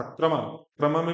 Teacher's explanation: क्रमा में भी क बिना स्वर का है, आधा है, और र आपका पूरा है